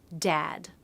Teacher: example word dad for that beginning D there is a stop D is a stop consonant so I let air build up a little bit in my throat and then release it